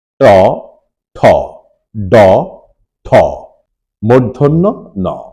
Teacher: ট বর্গের এই পাঁচটি বর্ণ উচ্চারণ করতে গেলে জিওভার অগ্রভাগ গিয়ে মূর্ধার সাথে আঘাত করতে হয়